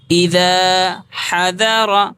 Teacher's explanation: الف مدہ کو ایک الف کے برابر کھینچ کر پڑھیں گے